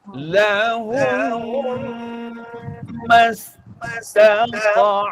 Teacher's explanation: Hati ya, pastikan ni dua harakat. Jangan baca lahumma, tak cukup. Lahumma baru satu harakat.